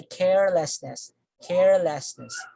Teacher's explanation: then we say carelessness carelessness so although we add nests here the stress still falls on the first syllable